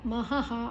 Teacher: ಮಹಃ ಹ ಆದ ನಂತರ ವಿಸರ್ಗದ ಉಚ್ಚಾರಣೆ ಹ.